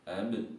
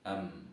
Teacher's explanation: Nah, kalau ab itu dia sudah ketemu dipantulkan. Sedangkan am enggak usah. Ab, am itu 2 hurufnya ba dan mim.